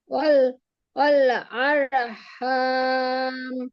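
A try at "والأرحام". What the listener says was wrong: রয়ের মাখরাজটা সুন্দর করে পড়েন। আরু, আরু হাম। আচ্ছা বলেন, রয়ের মাখরাজ কি আপু? রয়ের মাখরাজ কোথা থেকে হয়েছে?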